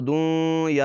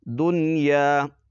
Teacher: اخفا بھی نہیں کرنا اور ادغام بھی نہیں کرنا اس پر، بلکہ نون کو ظاہر کرنا ہے